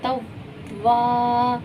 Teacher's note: الف خالی ہے، اس سے پہلے زبر آ گیا تو الف مدہ ہوا، اسے ہم ایک الف کی مقدار کھینچ کر پڑھیں گے۔